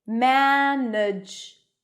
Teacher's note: listen to the word management one of the vowels is not pronounced